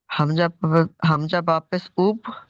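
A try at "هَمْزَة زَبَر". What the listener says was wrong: হামজা বা পেশ নয়, বা পেশ নয়।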